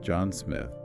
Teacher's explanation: stressing Smith, John Smith, can sometimes make it sound almost like a question or an afterthought